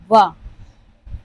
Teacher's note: ये व ऐसा है जो दंत ओष्ठ से उच्चारित होता है